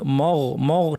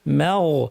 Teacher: মাগ বলার সময় মিমটা পাতলা, গয়নটা ভারী, অনেকে দুটোই ভারী করে ফেলেন, বলেন মগ, মগ ঠিক না, মাগ।